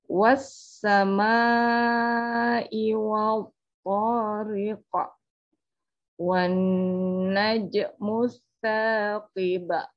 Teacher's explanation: Jadi membacanya lamnya tidak dibaca, langsung memasukkan lam ke huruf sin. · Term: alif lam syamsiyah